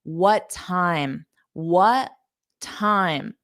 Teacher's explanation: you can remove the pause between them by dropping the T on the first sound